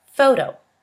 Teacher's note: the sound is a voiceless labiodental fricative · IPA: /f/